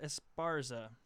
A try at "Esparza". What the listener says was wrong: No, you have to roll your R. Esparza.